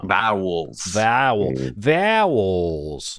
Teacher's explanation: There's a threat of like another syllable creeping in there somehow.